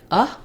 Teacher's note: the second a is unstressed and just sounds like uh it's vowel schwa